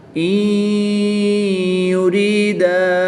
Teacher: نون ساکن کو یا مشدد میں مدغم یعنی شامل کر کے غنہ کر کے پڑھیں گے۔ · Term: ادغام مع الغنہ